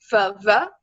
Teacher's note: F and V are labial dental with the teeth and the lips